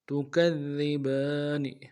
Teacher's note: کاف کو دال کے ساتھ ملانا ہے، دال کے اوپر تشدید زور دیں گے، اگلے دال کو باریک ادا کرنا ہے ، با کے اوپر کھڑا زبر ہے، ایک الف دال میں